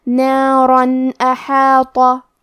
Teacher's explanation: ہم یہاں تنوین ظاہر کریں گے اور اسے نون ساکن پڑھیں گے، اور بغیر غنہ سے یہ حکم کو ادا کریں گے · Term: اظہار